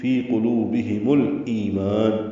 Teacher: میم ساکن تھا لیکن ملانے کی وجہ سے پیش لگانی پڑی